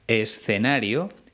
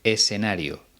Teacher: consiste en pronunciar la zeta y la c como una s por ejemplo en vez de pronunciar escenario ella dice escenario y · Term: seseo